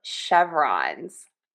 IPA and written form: ˈʃɛv.rɑnz (Chevrons)